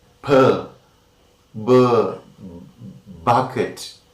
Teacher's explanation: the lower lip and the upper lip come to a contact, that is closure